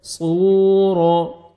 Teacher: واو مد ہے اور را کو مرزبر ہے, را کو موٹا کر کے پڑھنا ہے. صورا, واو کو آپ نے ہونٹ گول کرنے ہیں تاکہ واو اچھی طرح ادا ہو